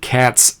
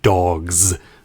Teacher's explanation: in cats, we end this with the voiceless S sound, and in dogs, we end it with the voiced Z sound, as in zebra.